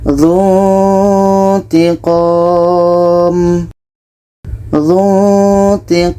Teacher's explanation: Ketika sebut huruf nun, kita sudah merasakan huruf ta. Kita baca dzutiqom. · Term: ikhfa